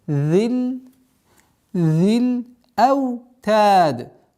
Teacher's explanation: Нужно обращать внимание, чтобы межзубное произношение было полноценным.